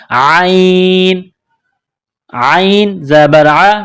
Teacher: عین گلے کے درمیان سے عین کو نکالنا ہے زور لگا کر